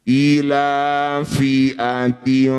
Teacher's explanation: Jadi bunyinya antara kasrah dan fa di tengah-tengah ketika dengung. ujung gigi atas sudah nempel di perut bibir bawah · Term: ikhfa